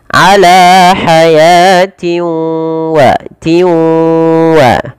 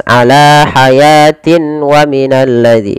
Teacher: Kemudian pada lafal tanwin kasratain bertemu dengan huruf waw, ini kita hukumi dengan bacaan idgham bi gunnah. Cara membacanya yaitu memasukkan tanwin ini kepada huruf waw, karena idgham itu artinya memasukkan.